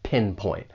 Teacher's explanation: The stress is on that first syllable, pinpoint. And I'd also like to point out that final T, it's really a stop T. It's pretty subtle